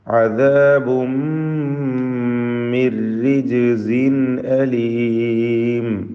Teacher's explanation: റിജ്സിൻ ഇതിലുള്ള തൻവീൻ ഇൽഹാർ ഹൽഖി നൽകി മണിക്കാതെ വെളിവാക്കണം. ഹംസയാണ് ശേഷം വന്നിട്ടുള്ളത്.